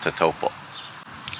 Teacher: You don't draw out that L. It's not tatačulbixw. That L comes to an abrupt stop.